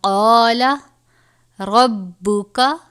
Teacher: را کے اوپر زبر ہے اس لیے را کو بھی پر پڑھیں گے